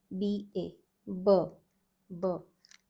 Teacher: B-A, B, B. Pronounced using the lips. Non-aspirated letter.